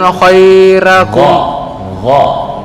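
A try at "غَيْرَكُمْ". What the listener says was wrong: Yang saya dengar tambah khairakum, artinya ntar bisa berubah. Ghairakum itu selain kamu. Tapi kalau khairakum sebaik-baik kamu, beda kan?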